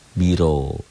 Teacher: Ro-nya tebal tafkhim karena baris di atas.